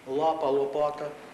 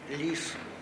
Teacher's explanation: L тверде, лапа, лопата, л - м'яке, ліс, перед і, сіль